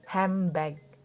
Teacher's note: karena nd jika disuarakan lebih cepat bisa berubah menjadi m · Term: assimilation